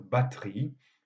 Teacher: Donc, on a une tendance à la simplification syllabique, à la diminution syllabique, et en particulier le E atone qui précède la voyelle tonique a tendance à être absorbé et à disparaître dans la prononciation · dans la forme batterie, le E disparaît complètement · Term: syncope du E prétonique